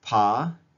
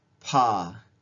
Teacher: unaspirated P and the aspirated P, we can find them in the same environment in data points H and L.